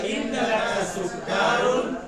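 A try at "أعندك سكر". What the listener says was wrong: K-nya pendek. Bukan sukkarun. Sukkarun. A'indaka sukkarun.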